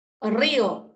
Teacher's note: la fuerza de voz está en la vocal cerrada y está al lado de una abierta